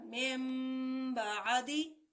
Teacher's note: ہم میم زیر نون من پڑھنے کے بجائے میم زیر میم مم پڑھیں گے ، اور اگلا حرف ہر حال میں با ہوگا، تو یہ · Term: اقلاب